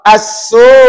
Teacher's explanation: Bila wakaf assu matikan hamzah. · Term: mad wajib muttasil